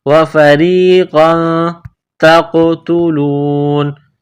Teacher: تا کو قاف کے ساتھ ملانا ہے، قاف کو موٹا کرنا ہے، تا کو باریک کرنا ہے. تا قاف زبر تق.